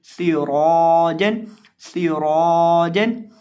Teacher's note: क्योंकि रौ के ऊपर ज़बर है, और साथ अलिफ को भी मोटा करेंगे क्योंकि वो मोटे हरफ के बाद है, और सीन के अंदर सीटी पैदा करके पढ़ेंगे